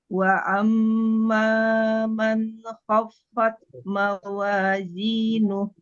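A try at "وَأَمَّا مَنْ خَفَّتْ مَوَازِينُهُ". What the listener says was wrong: Ya, jelaskan. Khofat. Fat. Taknya kasih angin. Fat. Fat.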